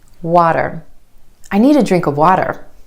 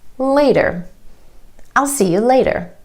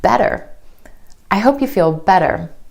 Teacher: the flap T is really just a D sound and this flap T happens when T is in the middle